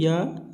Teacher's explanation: य को जो है इसे तालु। तालु व्यंजन भी कहते हैं क्योंकि इसका उच्चारण स्थान तालु से होता है